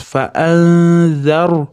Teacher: Nun z ga ixfo bo'ladi, yashiramiz.